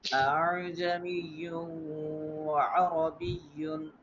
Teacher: If two Hamza coming together, the second Hamza we should make a soft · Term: seal